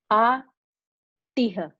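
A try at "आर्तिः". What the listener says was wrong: Artiha. No. Artihi. Not Artiha. Visarga. Visarga. Visarga takes a sound of the preceding the letter, the vowel, which is E, Ikara. So Artihi.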